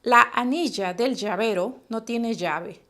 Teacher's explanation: presten atención al sonido palatal del dígrafo